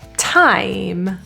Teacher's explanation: to add more airflow like like like you're releasing air time vowel is a diphthong here I add the tail